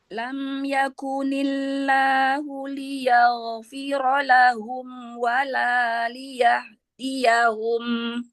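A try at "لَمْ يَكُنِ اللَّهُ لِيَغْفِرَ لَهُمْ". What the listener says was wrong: Liyaghfira. Huruf gho ini coba ditebalkan lagi. Lam yakunillahu liyaghfira lahum. Ro-nya tebalkan juga.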